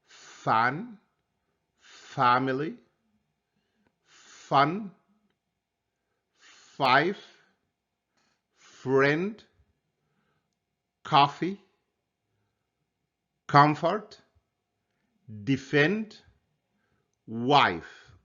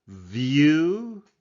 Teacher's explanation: the v sound is a voiced sound because there is a vibration of your vocal cords